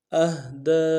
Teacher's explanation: دال کے اوپر کھڑا زبر بھی ہے، مد عارض بھی ہے، دو الف امداد میں کھینچیں گے